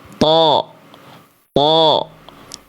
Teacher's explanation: membuat huruf tebal vokal A-nya menjadi seperti vokal A yang gemuk ya, bukan vokal O sebenarnya